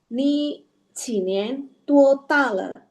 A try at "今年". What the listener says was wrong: 今年. Ya, jadi bukan chin ya. Kalau chin itu jadi Q dia, konsonan Q. Nah, ini chin nih, chin tua tala.